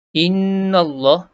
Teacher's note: Innallah, nun bersabdu, dengung pada nun bersabdu. Wajib gunnah pada nun bersabdu.